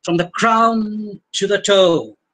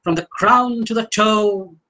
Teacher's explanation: the fact that toe ends with open vowel sounds that may be dragged for a while